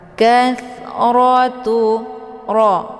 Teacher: fathah itu dibaca tebal dengan posisi pangkal lidah terangkat ke langit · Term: bacaan tebal